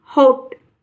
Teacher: आ और ओ के बीच की ध्वनि होती है